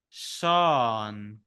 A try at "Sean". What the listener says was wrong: Nice. Very nice.